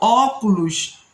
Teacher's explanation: recebe acento agudo na vogal dessa sílabas no no vocábulo óculos antepenúltima sílaba mais forte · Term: proparoxítonas